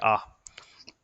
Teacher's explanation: जिनमें मुंह पूरा खुलता है। तो मुंह पूरा खुलता है वो कौन सा स्वर है? आ स्वर